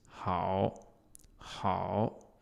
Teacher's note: So this character, you notice the pinyin for it is H-A-O. And it's a third tone, meaning that it dips.